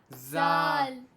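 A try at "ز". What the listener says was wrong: जाल नहीं है, ये जा है, जा।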